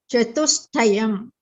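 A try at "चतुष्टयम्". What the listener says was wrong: Sakara should not come. It should be chatuštayam. You see the alphabets, it's a sh and a ta. So shta. So chatuštayam. Shtayam. Shtayam.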